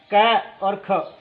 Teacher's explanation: क और ख ये जीवा मूलम है यानी जीभ के मूल से बोले जाते हैं, इसलिए इसको जीवा मूलम कहते हैं।